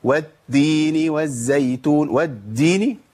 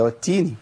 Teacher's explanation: لابد من الهمس، لابد من جريان النفس في التاء الاولى من المشدد